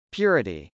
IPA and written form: pjˈʊrəti (purity)